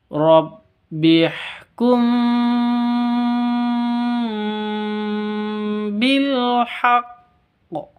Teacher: bukan bilhaqqi atau bilhaqqo bukan seperti itu tapi ditahan dulu baru dikeluarkan